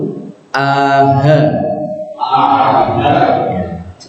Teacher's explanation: Hamzah sifatnya jahar jadi nafasnya ditahan